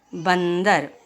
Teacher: अनुस्वार को बोलने के लिए हवा सिर्फ नाक से निकलती।